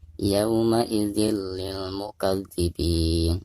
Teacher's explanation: Tanwin kasroh tain lalu berhadapan dengan huruf lam yang merupakan salah satu daripada huruf idgham bila guna, lam ya. Nah, maka cara membaca tanwin di sini itu harus dimasukkan langsung ke huruf lamnya ya. Jadi cara membacanya yauma idzil lil mukadzibin.